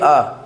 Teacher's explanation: जैसे है हमारा आ बोलिए अ, ऐसे बोलिए अ, हमारा मुंह ऐसे हुआ, काट देना है। अ बोलिए अ, हमारा जो होठ है वो गोलाकार नहीं बन रहा है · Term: आवृत्तमुखी स्वर